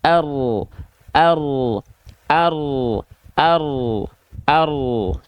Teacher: Jadi yang asalnya huruf ro dilafalkan ujung lidahnya ke arah langit-langit bagian mengarah ke depan, dia agak digeser ke dalam sedikit. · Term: inhiraf